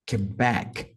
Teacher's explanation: então back é mais forte